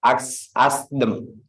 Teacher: We didn't pronounce H, but them. Ask them.